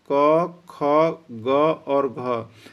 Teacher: सिर्फ क ख ग घ का ही उच्चारण स्थान कंठ है